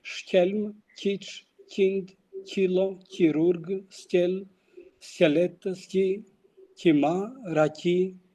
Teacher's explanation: the palatalization of K before front vowels in Albanian-speaking area of Himarë and even in Kurvelesh.